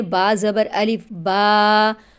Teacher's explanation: تو با کے بعد الف کی ساؤنڈ منہ کے خالی حصے سے آ رہی ہے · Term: الف مدہ